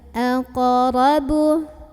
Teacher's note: Ada qalqalah sugra karena ada huruf qalqalah yaitu qaf yang sukunnya ini sukun asli dan berada di tengah-tengah bacaan. Maka cara membacanya dipantulkan dengan pantulan yang kecil ya.